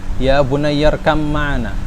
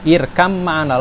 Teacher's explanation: langsung ke mim. Ba-nya udah hilang.